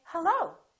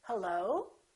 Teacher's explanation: I can say hello, falling intonation, hello, nice to meet you. Or I can make the rising intonation, and when I answer the phone, I can say hello. So the pitch goes up.